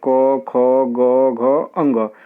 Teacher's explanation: और इन सभी वर्णों का उच्चारण स्थान क्या है, कंठ है